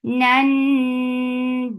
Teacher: This gunna is akmal, so keep the sound in your nose for a longer time.